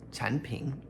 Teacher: the third tone gets changed to kind of a second tone here when it comes before a third tone